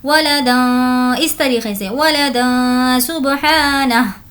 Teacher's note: यहाँ पर हमें गुन्ना करना है। तनवीन के बाद सीन है जो कि हुर्फ़ इख्फ़ा में से है